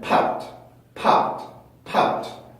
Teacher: 자, 그래서 소리가 조금 더 세집니다. 무성음 뒤에 오는 규칙 동사의 D 발음은 소리가 조금 더 세요. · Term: 된소리